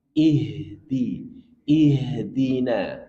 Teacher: Coba H-nya dialirkan lagi karena H punya sifat rakwah.